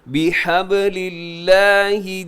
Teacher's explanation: وَاعْتَصِمُوا، آگے بی حبل، اسے بے حبل نہیں پڑھنا، اپنی بی بازیر بی بحبل اللہ، لفظ اللہ کو باریک رکھیے گا، اس سے پہلے لام کے نیچے زیر ہے